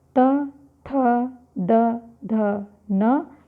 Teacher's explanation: त थ द ध न भी दंत से बोलते हैं